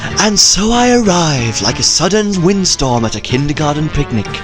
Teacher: I give him sort of a calm, breathy voice.